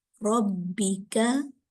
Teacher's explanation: را پہ زبر آ رہا ہے، اس لیے اس کو جو ہے پر پڑھا جا رہا ہے